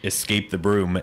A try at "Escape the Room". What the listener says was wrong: Sounded like you said Escape the Broom. That's a cleaning product.